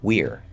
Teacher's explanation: this actually becomes an R-colored E or an R-colored I. If you produce an E or anything between E and I, when you blend it with that R, you're going to sound perfectly fine.